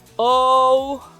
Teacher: the way we pronounce our o's has a more rounded u sound at the end